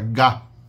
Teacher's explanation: ga, que é a oclusiva velar sonora no velo, que é a parte de trás do céu da boca · A parte de trás da língua encosta ali no finalzinho do céu da boca, quase nas amígdalas, né?